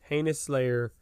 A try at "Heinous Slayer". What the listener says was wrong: Can we get a little bit more pronunciation on that name? It sounded like Anus Slayer, which is also, depending on who you ask, a pretty badass name.